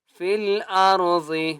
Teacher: ضاد کو موٹا کریں گے